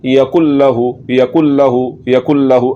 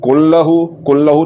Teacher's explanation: तो यहाँ पर इस नून की किसी सिफ्त का बाकी ना रहना, यूं नून को मुकम्मल तौर पर मिला देना, ये इदगाम ताम है